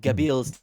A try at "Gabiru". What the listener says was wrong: We're going with the anime pronunciation of things. They actually call him Gabiru. So if you see Gabil, say Gabiru.